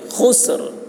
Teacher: خا کو حلق سے اور را کی آواز نکلے گی وقف کرتے وقت. خسر، خسر، یہ را کی آواز نکل رہی ہے.